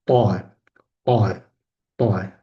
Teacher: Bu tovushni talaffuz qilganimizda til uchi tepa tishlar orqasi tanglayga yopishtiriladi va zarb bilan qo'yib yuboriladi. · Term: to harfi